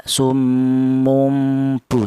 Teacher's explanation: Tanwin ini ya, mumbu ya, tanwin ini itu hakikat dari tanwin itu sebenarnya adalah non mati ya. Jadi non mati tersebut cara bacanya diganti dengan huruf mim, kemudian ya bertemu dengan huruf ba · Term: iklab